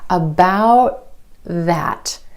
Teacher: Instead of that true T at the end, most Americans are going to hold that T, about. My tongue tip goes to the ridge behind my teeth and just stays there. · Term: held T